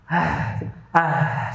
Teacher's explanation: ketika mengucapkan hurufnya tidak ada getaran pada dua pita suara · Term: Hames